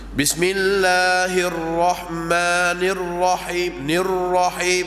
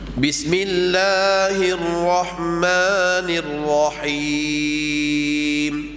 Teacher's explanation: Bismillahirrahmanirrahim nirahim digetarkan lidah maka itu kurang fasih bacaan yang fasihnya ro yang bersabdu tak digetarkan lidah ya disembunyikan getaran